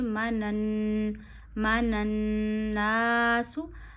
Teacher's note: आ मनन नासु अच्छा नून पे तशदीद है। नून की आवाज नाक में ले जाइए। एक उंगली जितनी ठहराइए। · اسی طرح کھڑی زبر حمزہ پہ ایک انگلی جتنی کھینچی جائے گی، آمن الناس۔ اچھا، نون پہ تشدید ہے، نون کی آواز ناک میں لے جائیے، ایک انگلی جتنی ٹھہرائیے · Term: नून मुशद्द का गुना, نون مشدد کا غنہ